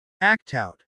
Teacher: Act out, the T connects with out